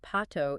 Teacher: the P sound in a word like pato is unaspirated. There is no puff of air. The vocal cords vibrate almost immediately when the lips part. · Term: unaspirated P